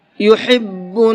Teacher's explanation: بڑا ہا کو حلق سے نکال کر کے پڑھتے ہیں اور چھوٹے ہا کو حلق سے نکال کر کے تو پڑھتے ہیں، لیکن اس کو سینے کی طرف سے نکالتے ہیں، اس کے ساؤنڈ جو ہے تھوڑا سا بھاری ہوتا ہے۔